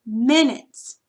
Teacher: So the dot's going to go between the N and the U, and the accent is on the first syllable